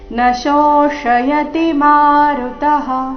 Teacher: ಈ ಶಬ್ದದಲ್ಲಿ ಮೊದಲು ತಾಲವ್ಯ ಶ ನಂತರ ಮೂರ್ಧನ್ಯ ಶ ಬಂದಿದೆ.